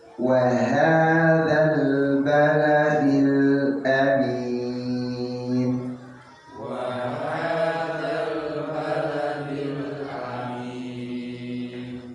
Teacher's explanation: Semua hurufnya tipis. Ha tipis, waw tipis, dal tipis, lam tipis, hamzah tipis, fathah.